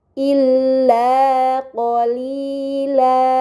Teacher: terdapat harokat fathatain ketika waqaf. Ini dinamakan mad iwad, maka harus dibaca panjang selama 2 harokat